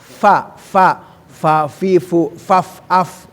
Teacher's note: bibir yang bawah digigit dengan atas